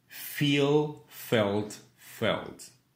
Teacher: Dans la forme felt, au prétérit au participe passé, le L étant suivi d'une consonne, il est sombre aussi.